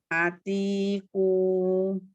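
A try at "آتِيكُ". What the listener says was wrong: Ati, tebal pokoknya. Ya, untuk huruf-huruf yang tebal isti'la, pangkal lidahnya naik.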